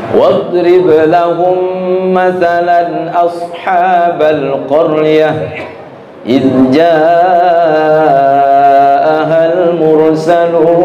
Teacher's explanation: Jadi ketika membaca surah Yasin pada ayat yang awalnya wadrib lahum itu, ya, maka ba-nya yang dikolkolah. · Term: qalqalah